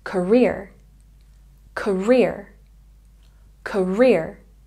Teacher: career has a stress on the second syllable